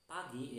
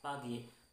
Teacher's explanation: Nah, P pada kata pagi di sana dalam pengucapannya yaitu pengucapan pagi ya, P-nya diucapkan secara lepas gitu ya. Karena memang P tersebut menghadapi sebuah huruf vokal yaitu A ya.